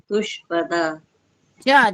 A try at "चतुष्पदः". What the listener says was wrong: चा भी है उसमें, चतुष्पदाः। नहीं, तुष्पदा नहीं है, चा उसमें पूरा है। चतुष्पदा चा जो है वो आधा नहीं है, वो पूरा है, इसलिए आपको अलग से पढ़ना पड़ेगा उसको।